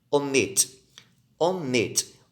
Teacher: Observe que a última sílaba é mais forte e termina em consoante, vogal, consoante.